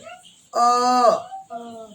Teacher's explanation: अ जो है जीभ का बीच वाला पार्ट उठता है